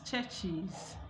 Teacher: So when we have affricates ending a word, when you attach a plural marker to the affricate, the production of that plural marker becomes is. So we have church with es, it becomes churches.